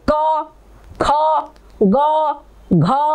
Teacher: जो जिह्वा का स्पर्श है तो थोड़ा सा कंठ की ओर ही जरा सा हो रहा है, बाकी और कहीं तालु में या मूर्धा में नहीं लग रहा है, ठीक है।